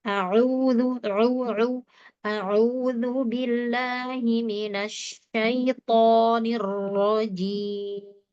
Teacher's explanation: Jadi huruf ain ditipiskan, dia hurufnya tipis ya. Lepas saja. Kemudian tekan katup tenggorokan, disentuh, tekan ya. Enggak cuma menyentuh tapi menekan.